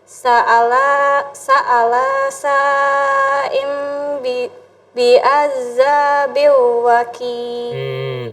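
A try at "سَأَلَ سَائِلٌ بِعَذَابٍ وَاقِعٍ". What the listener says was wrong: Perhatiin panjang pendeknya. Sa'ala, lanya nggak panjang ya. Sa'alasa berarti sa'ala sa'ilum bi'adzabin waqi'.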